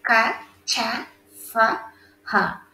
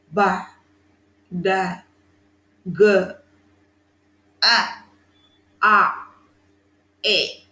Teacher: If you touch your throat, you could find no vibration when you are uttering all these consonants. But when you are reading all these vowels and 15 consonants, you could feel a kind of vibration, a kind of pressure, a kind of block. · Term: voiceless